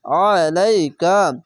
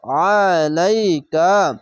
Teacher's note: আইন জাবার আ মোটা করে গলা চিপে পড়বেন